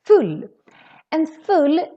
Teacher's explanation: full has two consonants so the u becomes really really short full and full it is kind of like the english fall